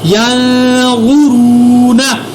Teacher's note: یہاں پر نون پر اخفا کیا آگے کیونکہ حروف اخفا ہے. غا اور را دونوں کو میں نے پر بھی ادا کیا کیونکہ یہ دونوں موٹے حروف ہیں.